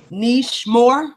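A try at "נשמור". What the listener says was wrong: Nishmore. We will guard. We will guard. Nishmore. Good job.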